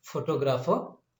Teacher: on the second syllable there is a stress